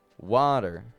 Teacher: Now, the second half of the word, water, is the unstressed syllable. It's a little bit quieter than the first.